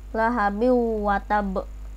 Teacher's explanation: maka huruf waw harus dibaca melebur dengan huruf sebelumnya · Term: idgham bi gunnah